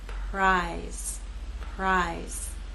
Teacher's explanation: R will begin without vibration, and then you'll add your voice as we move into I.